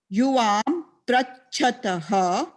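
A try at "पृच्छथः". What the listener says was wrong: Not prachataha. It is not prachataha, it becomes prichataha. Not pra. Prichati, prichataha, prichanti. Prichasi, prichataha, prichata. So pricha. Prach is a dhatu. When you decline that,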